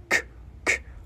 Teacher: chữ K mình nhớ bật cái hơi đưa ra nha